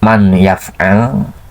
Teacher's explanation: makhraj nun itu asalnya dari ujung lidah, pindah ke khaysum, ke pangkal hidung, karena akan menghasilkan guna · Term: idgham ma'al guna